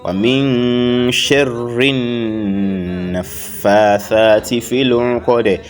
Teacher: So as we nasalize the raw, we also nasalize the noon as well without taking a break.